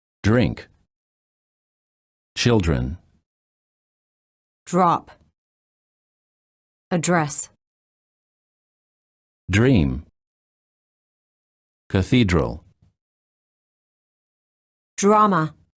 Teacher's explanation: D plus R sounds almost like dr sound. When the D is followed by an R, the D changes and becomes an almost j.